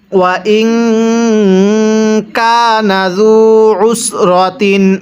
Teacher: আইনটা চাপ দিয়ে পড়ব, অন্যথায় আমরা অনেকে আইনটা হামজা উচ্চারণ করি। যদি হামজা উচ্চারণ করি তাহলে পড়াটা সহি শুদ্ধ হবে না।